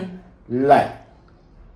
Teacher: ल दंत जैसा है, ये दांतों से ही बोला जाएगा, दंत ल। श, ये जो शेर वाला स है ये तालु श।